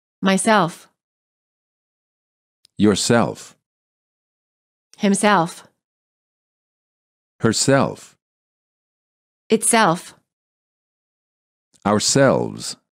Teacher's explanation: reflexive pronouns stress the last syllable